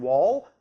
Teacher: But with an ol, like the last sound in wall, the first and second formants are right on top of each other, around 400 and 600 Hz, even if the third formant is still in the same place. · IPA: [ɫ]